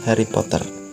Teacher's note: Kalau di Indonesian accent itu R-nya kuat banget.